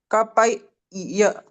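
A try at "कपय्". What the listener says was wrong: No, ya is not complete. It is kapai.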